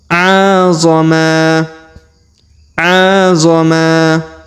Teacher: Huruf ma kita panjangkan 2 harokat karena di depannya terdapat alif.